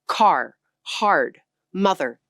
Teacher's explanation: speakers pronounced the R sound wherever it appeared in a word · Every R got spoken fully, the way most Americans still say it today. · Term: rhotic